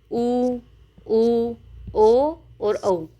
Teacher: चार ऐसे स्वर हैं जिनके उच्चारण के समय हमारी ओष्ठ की आकृति गोल हो जाती है। · उच्चारण के समय ओष्ठ गोल हो जाते हैं। यानी कि इसके उच्चारण के समय हमारे ओष्ठ की आकृति गोल हो जाती है। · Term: वृत्ताकार या गोलाकार स्वर